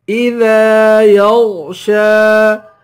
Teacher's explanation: الف کی مقدار کھینچ کے پڑھیں گے الف حروف مدہ ہے یا کو غین سے ملائیں گے غین کو موٹا پڑھیں گے اور شین کو ایک الف کی مقدار کھینچ کر پڑھیں گے